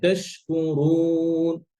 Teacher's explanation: রটা যখন পেশ হয় তখন একটু নিজের থেকে এক্সট্রা এফোর্ট দিয়ে আপনার রটা মোটা করতে হয়